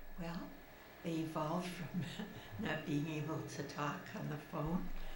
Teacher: you can hear in her voice after injection she's a little bit breathy she doesn't have a strong voice